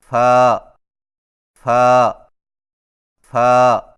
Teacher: فا کی ادائیگی میں ثنایا علیہ کے سروں کو نچلے ہونٹ کے گیلے حصے پر لگا کر باریک آواز میں پڑھیں